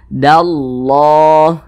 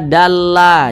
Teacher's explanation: Jadi kalau ada lafaz Allah sebelumnya ada tanda baca fathah atau ada tanda baca dhammah, maka lafaz Allah itu ditebalkan, dibaca tafkhim, dallah gitu.